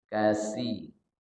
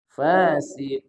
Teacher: ujung lidah ketemunya dengan gigi seri atas kalau Fasi ketemunya lebih cenderung ke gigi bawah gigi seri bawah